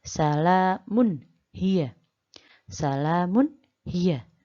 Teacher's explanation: Mun dibaca jelas karena bertemu dengan salah satu huruf Izhar yaitu ha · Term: idhar